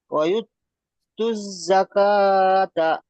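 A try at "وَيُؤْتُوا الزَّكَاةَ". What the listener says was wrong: মাশাআল্লাহ।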